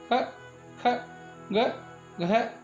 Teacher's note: इनकी उत्पत्ति स्थल कंठ या गला है।